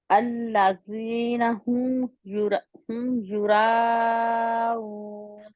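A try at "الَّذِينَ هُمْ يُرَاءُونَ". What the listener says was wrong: اب آپ را کو لمبا تو کہتے ہیں، را تھوڑا موٹا بھی کہنا ہے، راؤن.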